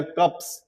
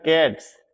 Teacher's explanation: यह जो व्यंजन है हमारे कोसोनेंट है इनको बोलते हैं अघोष व्यंजन जैसे पी टी के एफ और ये थ